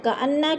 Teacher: کأنہ کی نون مشدد ہے، سختی سے جما کر پڑھیں گے۔ ہم بنیان، میم ساکن کے بعد با آ رہا ہے تو ادھر اخفاء شفوی یعنی غنہ کریں گے، آواز کو ناک میں چھپا کر پڑھیں گے، جیسے کأنہم بنیان، بن پہ اظہار مطلق ہے، غنہ نہیں کریں گے، نون ساکن کے بعد جا گیا تو ادھر اظہار مطلق۔